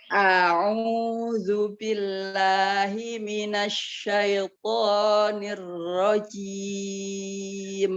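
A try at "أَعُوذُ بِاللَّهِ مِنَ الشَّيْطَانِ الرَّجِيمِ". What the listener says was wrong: Iya, bagus. Huruf ro-nya juga udah lumayan nih, Bunda.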